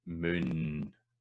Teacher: So like a word like moon, if you sing moon, what tends to happen is you want to sing the N at length, because that vowel is shortened because of the consonant that follows it. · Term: Scots vowel length rule